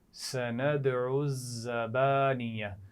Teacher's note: تو یہ زا ہے سیٹی والی ہے اس کو نرمی سے نہیں پڑھنا